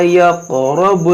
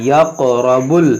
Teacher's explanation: فلا یہ قاف میں قلقلہ کریں گے، یقرب، با کو لام سے ملائیں گے، اس واو کو نہیں پڑھیں گے، نہ اس الف کو پڑھیں گے۔